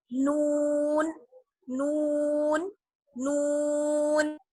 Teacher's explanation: اور زبان جو ہے آپ کی اوپر مسوڑوں پر لگ جائے گی، نون نون. زبان جو ہے آپ کی تھوڑی سی چوڑی ہوگی اور اوپر کے دانتوں کے جو ہمارے 4 دانت ہیں ان کے مسوڑوں پر لگ جائے گی ہماری زبان، اور وہاں سے ادا ہوتا ہے نون نون نون.